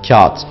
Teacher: Kağıt kelimesinde de yumuşak G'yi yine söylemeyiz ve kendinden önceki ince A'yı uzatarak söyleriz.